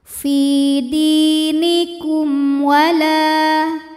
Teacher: Lalu berikutnya ada hukum izhar syafawi. Sebab mim sukun menghadapi huruf selain mim dan ba, yaitu huruf waw. Maka mim sukun kita bunyikan dengan jelas.